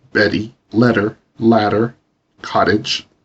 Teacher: This is a sound called the flap. You make it by lifting the tip of the tongue backwards, then quickly and decisively bringing it down with a brief flick against the alveolar ridge behind the teeth.